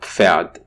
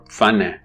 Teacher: p and f are indeed an affricate, so for all intents and purposes, they are to be pronounced as one unit. But you don't see the tie bar below or above the two sounds involved. · The sequence is bilabial plosives and labiodental fricative, which is the f, forming the affricate